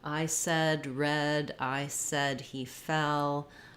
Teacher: The eh vowel is central, and what's important about the eh vowel is that it doesn't glide. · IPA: ɛ